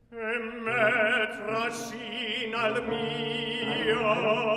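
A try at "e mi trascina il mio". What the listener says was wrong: I don't hear the il before mio. I hear nal mio, nail mio.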